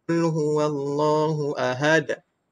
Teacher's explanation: Maka bunyi qalqalah huruf dal mesti bunyi macam baris atas.